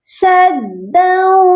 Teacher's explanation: یہاں پر ہم نے دو ایسے کر کے نہیں پڑھنا، یہ پڑھا جائے گا سداؤ، غنے کی آواز آئے گی